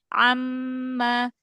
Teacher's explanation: Amma, diam aja lidahnya datar. Amma, kan makhrajnya dari tengah tenggorokan. Amma, jangan naik. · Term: huruf ain